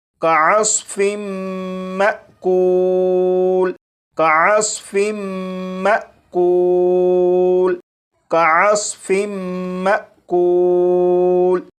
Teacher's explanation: اب ان دونوں الفاظ کو پڑھیں گے، یہاں پر میم مشدد پر غنہ بھی ہوگا اور یہاں پر الف کے اوپر جزم ہے، یعنی یہ حمزہ ساکنہ ہے، تو حمزہ ساکنہ کو جھٹکا دے کر پڑھیں گے